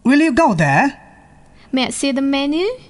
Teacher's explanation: yes-or-no questions take the rising tune at the end